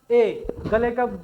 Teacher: ए गले में भी जोर पड़ रहा है, और इसके अलावा जो है जीभ तालु की तरफ को भी जा रही है ए ऐसे करके, तो ये ए जो है आपका कंठ तालव्य हो जाता है या कंठ तालु हो जाता है।